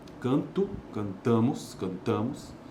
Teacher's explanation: o que distingue as pessoas do verbo é cumulativamente a mudança do acento no radical